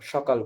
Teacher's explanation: তারপরে স হ বাংলায় তো একটাই স হয়ে যায়। সে সকালকে আমরা লিখি দন্তস ককার ল কিন্তু উচ্চারণ করি তালব্য সকাল বলি।